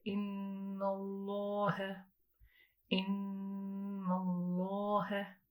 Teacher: So the lam, the heavy lam, is emanating from the sides of the tongue